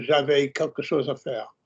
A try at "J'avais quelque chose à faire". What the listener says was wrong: The tones of the first bit were exceptionally good. Don't go teethy. J'avais quelque chose à faire, not j'avais quelque chose à faire. It's a smidge didactic and clean, and you don't have to be all the time.